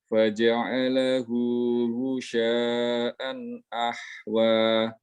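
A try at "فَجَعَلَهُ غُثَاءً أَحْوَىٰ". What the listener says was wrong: Lahlul jali. Lahan jali terdapat pada makhraj yang tertukar. Itu adalah tha, bukan shin.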